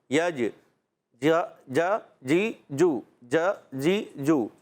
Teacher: اچھا بعض بچے پڑھتے ہیں یجعل, ابھی بھی کسی بچے نے پڑھا تھا تو یج جیم کی ادائیگی وسط زبان, زبان کا درمیان, اوپر تالو کا درمیان